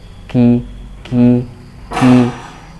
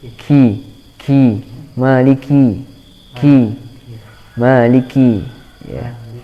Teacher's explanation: cukup mengeluarkan udara yang sedikit ya, ki, dan tetap jelas sifat syiddahnya, sifat tertahannya suara. Ka, ki, kalau diucapkan maliki, hi, kurang jelas syiddahnya.